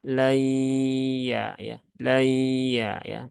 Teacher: di rongga hidung itu ada suara yang melewati rongga hidung sehingga rongga hidung di sini bergetar. Tapi kalau lay, lay, nah itu enggak bergetar. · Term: gunnah